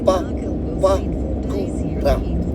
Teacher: So all of your vowels in that are all short. There's no stressed vowels, there's no long vowels in it. No tohuto or no potai or no macron above each vowel.